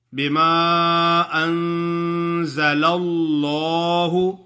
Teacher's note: ان یکفروا بما انزل اللہ، ان پہ غنہ کرنا ہے، بما انزل اللہ، آگے لفظ اللہ کا لام جو ہے اس سے پہلے حرف پر زبر ہے تو اس واسطے لام کو خوب ہی موٹا پڑھیں گے